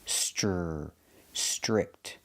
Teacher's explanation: The TR makes a ch chicken sound. Ch, str, stir, strict.